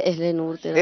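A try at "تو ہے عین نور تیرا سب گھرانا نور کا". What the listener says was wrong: अहले नहीं है, तू है तू है ऐने नूर।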